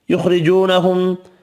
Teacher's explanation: خا پر پڑھنا ہے، را باریک پڑھیں گے، واو مدہ ایک الف کی مقدار میں کھینچ کر پڑھیں گے، میم مشدد پر غنہ کرنا ہے